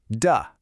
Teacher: You make that duh sound when the tip of your tongue taps the top of your mouth.